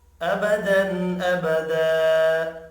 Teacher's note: وف کی صورت میں 2 زبر کو 1 زبر میں تبدیل کیا جائے گا اور الف مدہ پڑھا جائے گا۔ ابدا ابدا، الف مدہ 1 الف کے برابر کھینچ کر بھی پڑھا جاتا ہے۔